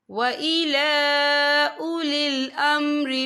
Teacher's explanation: لام کے پر کھڑی حرکات ہے اور اس پہ چھوٹی سی مد بھی ہے، تو ہم اسے 3 یا 4 حرکت کے برابر کھینچ کے پڑھیں گے۔